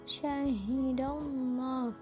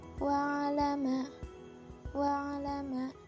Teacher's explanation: Kalau lam tafkhim itu ada penekanan pada huruf lamnya, syahidallah. Sedangkan pada lam tarqiq itu dibaca biasa saja.